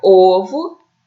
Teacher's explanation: Esse o é forte e é fechado.